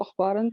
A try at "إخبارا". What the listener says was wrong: إخبارا, With the kasra. إخبار, not أخبار.